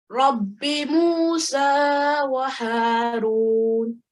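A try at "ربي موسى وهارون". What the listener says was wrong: Very nice, mashallah.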